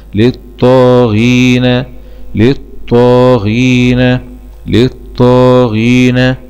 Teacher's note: لام سكون مدغمة في الطاء المشددة مع الفتح للطاء ، ألف صغيرة مد طبيعي للطاء، غين كسرة غي للطاغي، ياء